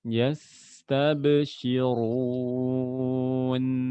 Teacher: Tapi huruf sin jelas ya, dia agak lebih lama temponya.